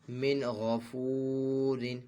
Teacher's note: را دو زیر رن من غفور، یہاں پہ بھی اظہار ہے، نون ساکن کے بعد حروف حلقی میں سے غین ہے، تو یہاں پہ نون ساکن میں غنہ نہیں کریں گے